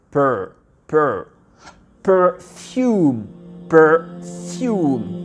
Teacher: le R, on va le prononcer à l'américaine. Donc c'est un R.